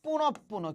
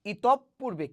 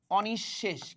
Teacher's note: শব্দের মাঝখানে বিসর্গ থাকলে বিসর্গের যে পরের বর্ণ সেটা কি হবে দ্বিত্ব উচ্চারিত হবে